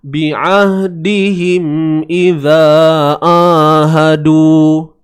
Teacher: Boleh kita kata itu adalah huruf yang tidak sempurna sifatnya lah. Memang nak sebut ain tapi tak sempurna sifat, dia pergi ke sifat dengung, pergi ke hidung. Itu yang terhasil bunyi Iza ahadu.